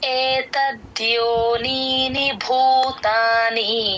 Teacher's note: ఏ అచ్చండి కంఠంలో నుంచి రావాలి ఇంగ్లీష్ లెటర్ లో ఏ లాగా చెప్తే చక్కగా వస్తుంది ఇది కంఠంలో నుంచి